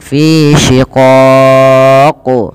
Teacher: ketika qaf sukun itu terhukumi dengan hukum bacaan namanya qalqalah. Maka ia perlu dipantulkan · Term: qalqalah kubra